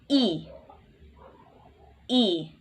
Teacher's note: And in the short E, the lips are relaxed and the central front area of the tongue is in central high area of the mouth for this sound. Then stretch out your lips a little, and that's a short E.